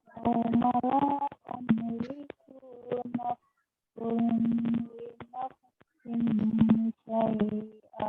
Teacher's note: La-nya panjang, ku-nya pendek.